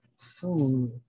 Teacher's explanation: Okay? And then the jaw height is high, of course, because the lower jaw and the upper jaw are tight, are close together